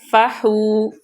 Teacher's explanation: فا کو اوپر والے دانتوں کا کنارہ نیچے والے ہونٹوں کے تر حصے سے لگے تو فا ادا ہوتا ہے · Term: حروف شفویہ